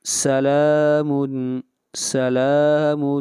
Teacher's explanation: لام کو کھینچ کر پڑھیں گے ایک الف کے برابر